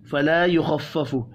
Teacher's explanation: खा हुरूफ मुस्तअलिया है, पुर पढ़ेंगे। अन्हुमुल अज़ाबु, नून साकिन के बाद हा है, इज़हार हल्की होगा, यहाँ पर गुन्ना नहीं होगा।